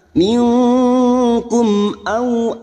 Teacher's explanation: Tadi kita wakaf di sini, sekarang kita membaca wasol atau terus, maka kita uraikan pada kalimat minkum au mim sukun bertemu hamzah idhar safawi, mim sukun dibaca jelas tanpa mendengung